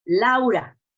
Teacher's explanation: We have written diphthongs, not spoken diphthongs. So if we say, for example, Laura, it's a clear A and a clear U.